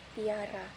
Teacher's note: palatalisasi, yaitu ketika bagian lidah naik ke langit-langit mulut keras